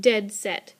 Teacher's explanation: because they're just entirely made of stressed syllables like dead set two different words or syllables that are both accented in short order · it's just entirely made of stressed syllables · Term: spondee